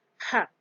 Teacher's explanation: finally we have the glottal fricative sound where we have a word like hat another type of sound